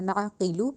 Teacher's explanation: نعقلو قوف کو موٹا کر کے ادا کرنا ہے، کاف ڈنڈے والی نہیں بنانی